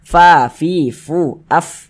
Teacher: Kalau kita mengucapkan huruf fa itu harus ada nafas yang mengalir ketika kita mengucapkannya. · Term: sifat hamas